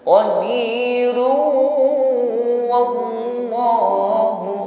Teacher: Run langsung masuk pada huruf waw dengan berdengung. Ketika berdengung maka bibir dihimpun ke depan sesuai dengan makhraj huruf waw. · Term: idgham bi gunnah